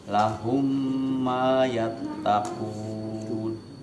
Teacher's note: Mim ketemu mim syaddah, bacanya hum, jadi ada gunnahnya, ditahan ya Pak ya. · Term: idgham mithlain ma'al ghunnah